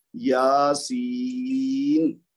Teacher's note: या को तो हम दो हरकत देंगे क्योंकि इसके बाद अलिफ मद्द आ रहा है, और फिर या साकिन से पहले सीन के नीचे जेर है तो ये बन रहा है या मद दो हरकत वाला, लेकिन आखिर में नून के ऊपर जब रुकेंगे तो ये मद्दे आरज बन जाएगा, तो हम पढ़ेंगे यासीन।